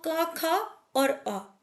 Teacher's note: क ख और अ ये तीनों हमारे कंठे कहलाते हैं क्योंकि तीनों का उच्चारण कंठ से होता है